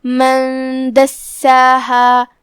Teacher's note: من دساہا کلمت دساہا میں یہاں سین پہ تشدید ہے، تشدید کا دھیان رہے 2 حرف کی مقدار میں ادا کرنا ہے